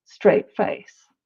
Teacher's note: the T at the end of straight gets glottalized so you don't often hear people say a straight face it's